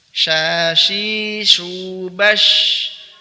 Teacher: Dia juga al-hams, dialirkan udaranya, kemudian ar-rakhawah dialirkan suaranya.